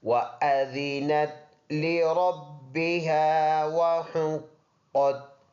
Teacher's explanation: واو دونوں ہونٹوں کے گول ہونے سے ادا ہوتا ہے، تو پڑھتے ہوئے ہونٹ گول کریں گے وَأَذِنَتْ لِرَبِّهَا وَحُقَّتْ۔